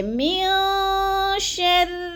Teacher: من پہ ناک میں آواز لے جانی ہے، یعنی آواز کو چھپا کر پڑھنا ہے، اس کو کہتے ہیں غنہ، اخفا۔